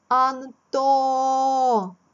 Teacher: Далі йде твердий приголосний Т.